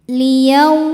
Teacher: Yau ada harfulin karena ada waw sukun didahului harokat fathah, maka dibacanya cukup lembut atau lunak.